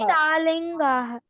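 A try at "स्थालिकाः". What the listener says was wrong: Sthali. No linga. Sthalika. Sthalike. Sthalikaha. No na sound is there. Sthalikaha.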